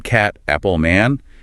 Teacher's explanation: >> This often comes down to jaw opening and tongue height. For the a in cat, apple, man, your jaw needs to be quite open and your tongue low and flat.